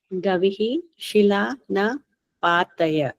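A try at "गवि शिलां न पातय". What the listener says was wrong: There's no visarga, Gavi. It's Gavi Shilamna. Gavi Shilam. Na.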